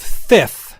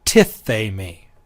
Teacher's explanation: that aspirated th sound hardens to tithemi. Again, iota reduplication is still there.